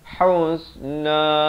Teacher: ha pedas di pertengahan kerongkong